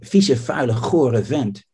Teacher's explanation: the initial consonant of the syllables, right, becomes voiceless